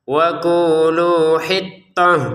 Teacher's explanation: Hittah sebagaimana disebutkan sebelumnya, ini adalah ta yang bulat. Kalau kita berhenti terbaca sebagai huruf ha.